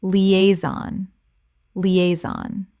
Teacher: 3 syllables with the stress on the second.